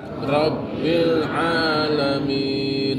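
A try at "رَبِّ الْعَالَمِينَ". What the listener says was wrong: Ya, jadi bukan alamin. Bedanya hamzah sama ain. Hamzah itu dilepas. A, I, U ditenggorokan. A, I, U. Ain hamzahnya itu ditekan tenggorokannya. Jadi sini al-alamin.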